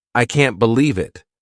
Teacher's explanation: notice how their voice goes up to show surprise